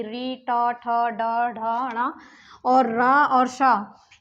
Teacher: इन सभी के उच्चारण में आपकी जीवा का आगे का भाग जो है वो दांत के ऊपर वाले भाग से टच करेगा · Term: मूर्धन्य